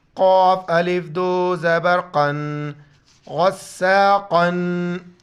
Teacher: قاف گلے سے موٹا پڑھیں گے اس کو